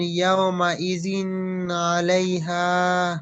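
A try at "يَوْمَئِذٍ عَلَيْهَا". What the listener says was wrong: ইয়াউমা ইজিন বলে যে একটু থেমে যাচ্ছেন, আওয়াজটি ধরে থাকছেন, ধরে থাকা হবে না। ইয়াউমা ইজিন আলাইহা।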